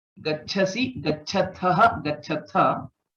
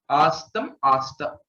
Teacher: There's no Mahaprana. It is Alpa Prana only.